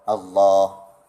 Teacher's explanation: kalimah Allah itu lafaznya hanyalah 2 harakat sahaja. Ya, iaitu mad asli, mad asli pada lafaz kalimah Allah, Allah.